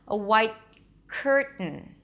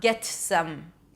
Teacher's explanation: The tongue remains there, white, and then I shift to the K sound without releasing the T